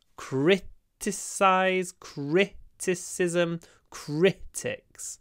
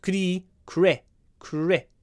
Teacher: The stress is always at the start.